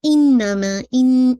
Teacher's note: Nasal sound ہے یہ واضح ہونا چاہیے. موسٹ کمپلیٹ غنہ ہے, اکمل غنہ ہے, 2 count almost depending on your recitation.